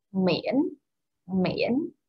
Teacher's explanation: this is the rise and like down and up tone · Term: dấu ngã